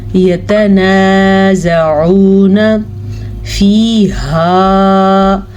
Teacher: ہا کو حلق کے آخری حصے سے نکالا جاتا ہے